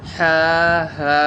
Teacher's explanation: হা হলকের মধ্যখান হইতে আওয়াজকে চাপাইয়া হা হলকের শুরু হইতে সহজ আওয়াজে উচ্চারণ হা হা।